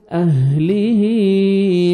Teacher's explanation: صحیح مخرج سے تاکہ ہا میں ساؤنڈ مکس نہ ہو اہلیہ ہا کے نیچے کھڑا زیر ہے یا مدہ کے قائم مقام ہے 1 سیکنڈ ایک الف کے برابر کھینچیں گے ہا کو